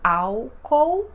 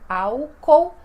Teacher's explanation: o L, quando ele está sozinho, sem uma vogal depois, ele tem este som de U